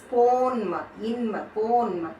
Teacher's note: மகர மெய்யானது தனக்குரிய அரை மாத்திரை அளவிலிருந்து குறைந்து 1/4 மாத்திரை அளவில் ஒலிக்கிறது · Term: மகர குறுக்கம்